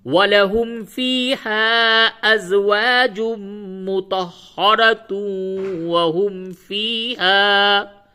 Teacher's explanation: اور مطہرہ پہ اگر آپ وقف نہیں کریں گے تو یہاں پہ ادغام مع الغنہ ہوگا، یعنی تا کو واو سے ملا کر کے اور غنے کے ساتھ پڑھیں گے